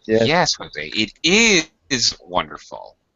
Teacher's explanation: Notice how I'm agreeing with him and how much I'm stressing is.